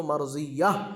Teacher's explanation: گول تا پر جب وقف کریں گے تو وہ ہا بن جائے گی. مرضیتن تھا لیکن جب وقف کریں گے رکیں گے تو مرضیہ ہا بن جائے گی یہ تا.